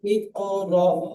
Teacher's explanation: হামজার উপরে সাকিন আছে, তাই সাকিন ওয়ালা হামজাকে আক্কা দিয়ে বা ঝটকা দিয়ে উচ্চারণ করতে হয়।